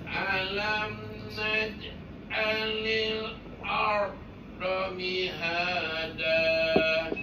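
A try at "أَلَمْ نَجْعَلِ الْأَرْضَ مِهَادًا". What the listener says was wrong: Okey, ar tu betul lah, tapi dekat a tu. A tu macam hamzah pula. Naja'a. Tebalkan. Tebal tafkhim.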